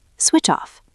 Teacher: The ch links to off.